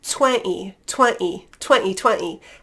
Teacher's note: So you could say 20, 20, 20, 20, and just sort of skip over that T with a glottal stop